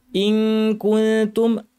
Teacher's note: দাঁতের গোড়ায় জিহ্বা লাগিয়ে তা বলতে হয় সেখানে কাছাকাছি আমরা জিহ্বা নিব লাগাবো না এবং নাক থেকে গুন্না করে বলবো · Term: ইখফা